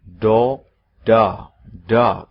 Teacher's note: Antara O dengan A. Seperti orang mengucapkan loro, 2, loro, sakit, A.